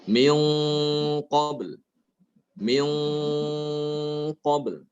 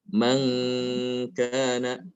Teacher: ketika nun sukun atau tanwin bertemu dengan qaf maka gunanya ikut tebal. Sebab qaf ini termasuk huruf yang tebal ya.